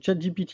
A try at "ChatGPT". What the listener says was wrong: on marquera n'empêche qu'il a prononcé le nom du chatbot en anglais et pas à la française. GPT.